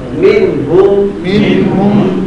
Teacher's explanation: یہاں نون ساکن کے بعد ہا آ گیا تو غنہ نہیں ہوگا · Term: اظہار